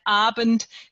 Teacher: Also bei Abend wäre das eben ein Zweisilber und er ist eben auch trochäisch, also anfangsbetont.